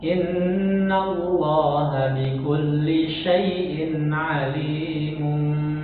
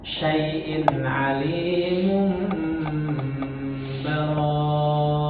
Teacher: Iklabnya dengan menempelkan bibir.